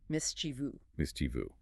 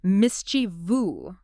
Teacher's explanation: They add a phantom I near the end, but it is strictly three syllables · With the stress heavily on the first syllable.